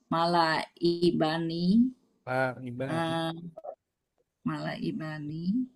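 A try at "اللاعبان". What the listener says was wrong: Nggak ada mimnya. La'ibani.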